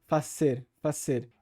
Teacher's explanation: E se vocês prestarem atenção como ela diz o verbo fazer, como em espanhol não tem essa sibilante sonora, zzz, é tudo feito com a sibilante surda, ss, essa palavra em espanhol, hacer, emprestaria então essa pronúncia ao verbo fazer do português, que seria então fazer, fazer.